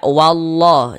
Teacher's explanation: maka lafaz Allahnya dibaca tebal, dibaca tabkhim.